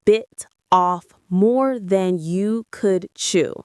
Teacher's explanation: The T in bit often connects with off, making it sound like bit off.